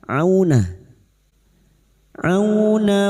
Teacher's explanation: Auna fathah bertemu wau sukun kita lunakkan